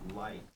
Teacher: In my pronunciation and RP, we say like. We have a diphthong, so the I is I. It's two vowel sounds in a singular syllable.